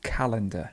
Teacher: the stress would be on the first so it's calendar